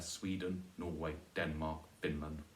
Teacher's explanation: You could make it Sweden or Norway, stressed on the first syllable there.